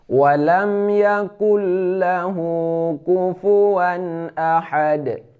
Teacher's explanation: Kenapa kul? Karena nun mati bertemu dengan lam yaitu idgham bila gunnah.